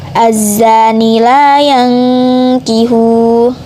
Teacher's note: Terdapat kaidah bacaan ifa hakiki sebab nun sukun bertemu huruf ka jadi dibaca dengung